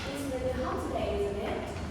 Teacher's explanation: rising intonation can be used to seek agreement or confirmation from the listener